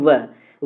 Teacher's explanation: जैसे आप बोलेंगे वह बोलेंगे तो आपको जो ऊपर वाला दांत है और नीचे वाला होठ है वो दोनों टच होगा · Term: दंतोष्ठ ध्वनि